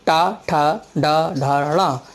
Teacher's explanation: मूर्धा में जीभ तालु से टकराती है तो टनटनाहट और ठनठनाहट होती है। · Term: मूर्धन्य ध्वनि